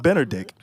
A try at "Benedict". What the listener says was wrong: Why you adding this R? You're saying Ben or Dick.